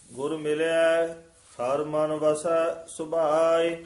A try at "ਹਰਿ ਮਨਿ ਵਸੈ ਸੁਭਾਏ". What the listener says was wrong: ਹਰ ਮਨ ਪਾਠ ਇਕੱਠਾ ਨਹੀਂ ਕਰਨਾ, ਹਰ ਤੇ ਯਮਕ ਲੱਗ ਜੇਗੀ। ਹਰ ਮਨ ਵਸੈ ਸੁਭਾਏ।